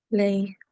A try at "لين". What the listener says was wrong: Lay for 2 seconds, a half circle sound, okay? Softly. I think you didn't prolong it for 2 seconds. And what is this rule called? Vaw madda. Yeah, there is a dhamma on lam.